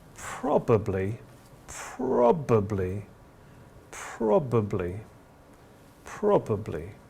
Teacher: we go down and then we go up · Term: fall rise tone